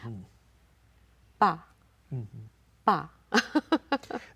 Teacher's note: air pressure is right behind your lips. But then you don't want to hear the aspirate tone.